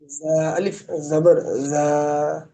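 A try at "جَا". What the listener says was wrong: জা কেন হবে? কায়দাটা বুঝে নেন। জবরের বাম পাশে খালি আলিফ মাদের হরফ। মাদের হরফ হইলে তার ডান দিকের হরকতকে এক আলিফ টেনে পড়তে হয় জা।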